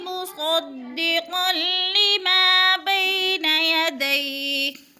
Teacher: عَلَى قَلْبِكَ بِإِذْنِ اللَّهِ مُصَدِّقًا لِمَا بَيْنَ يَدَيْهِ، مصدقا لی، قاف اور لام، قاف دو زبر تنوین کے بعد لام مشدد ہے تو ادھر ادغام کریں گے، لام کو جمع کر پڑھیں گے، اور قاف موٹے حروف میں سے ہے، پر کر کے پڑھیں گے۔ اور لیما، ما پہ الف مدہ ہے، الف خالی سے پہلے لام میم کے اوپر زبر ہے تو الف مدہ ایک الف کے برابر کھینچ کر پڑھنا ہے۔